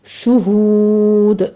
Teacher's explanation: شہود کو بھی ہم نے شہود نہیں پڑھنا، شہود، شین کے اوپر ضمہ ہے، ہونٹ گول کر لیجیے